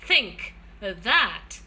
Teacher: here we have the tip and blade of the tongue coming in very near the upper front teeth, and hence we call it dental